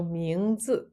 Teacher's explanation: So a name is 名字,名字. So we have here the second tone 名, rising tone, 字, fourth tone.